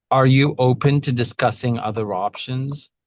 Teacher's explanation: I love that you made it sound like a clear question. You gave it a little scoop at the end.